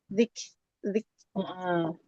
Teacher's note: kaf itu hamesnya tidak berlebihan ya. Dia hames alami nafas.